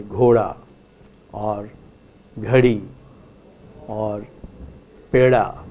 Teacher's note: Let us say in Hindi we have a rule which says the voiced retroflex consonant da becomes a flap · Between two vowels in Hindi, let us say, you do not hear a d but a r.